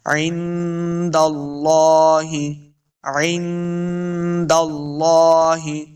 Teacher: عند اللہ، لفظ اللہ کلام پر پڑھیں گے، لام کے اوپر کھڑی زبر ہے، اس کو 2 حرکات لمع کرنا ہے